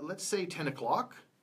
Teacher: And I'm coming up at the end there with o'clock.